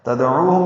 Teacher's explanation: را باریک ہے، کی یا مدہ ہے، ما الف مدہ ہے. تدعوہم میں دال ساکن پہ قلقلہ، عو واو مدہ ہے، 2 حرکات لمبا کریں گے. ہم میں میم ساکن پہ اظہار.